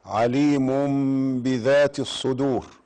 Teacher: الميم بعدها حرف الباء يبقى اخفاء شفوي لانها ميم بعدها حرف الباء